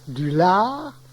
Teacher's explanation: Ce A s'allonge quand la terminaison est en art